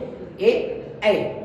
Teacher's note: आ का प्रयोग हम कंठ से करेंगे और ई का प्रयोग तालु से, इसलिए कंठ और तालु को मिल करके हम इसको बनाते हैं कंठ तालव में